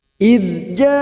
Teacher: Mad bertemu dengan Hamzah dalam satu kalimat namanya mad wajib muttasil mad wajib muttasil kita panjangkan empat atau lima harakat